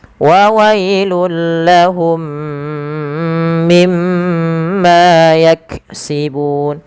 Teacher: Lahum mimma sama mim mati bertemu idgham mimi. Mim yang pertama masukkan mim kedua dan ditahan sepanjang 2 harokat. Kemudian mim yang kedua yang itu ditahan, yaitu adanya gunnah.